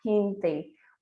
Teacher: o G eu pronunciei com som de R da língua portuguesa